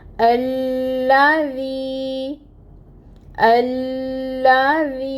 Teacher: تو یہ جو ذی ہے اس کو ہم دو حرکت لمبا پڑھیں گے۔ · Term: یا مد